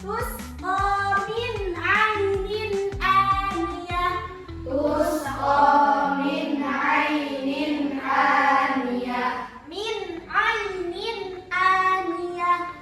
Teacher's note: Nah, di situ ada nun mati, di sini ada nun mati bertemu ain dan ada nun mati bertemu alif. Maka bacaannya harus dibaca jelas.